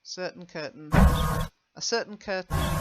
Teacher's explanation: I know it's got this AIN ending, but it's more of an un.